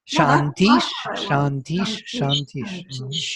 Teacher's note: visarga h has to be sh before sh, according to Pratishakyas. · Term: assimilated